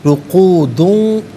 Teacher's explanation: وہم، واو چونکہ مشدد ہے جماؤ کے ساتھ پڑھیں گے، رقودوں، را پر پیش ہے، را کو پر کر کے پڑھیں گے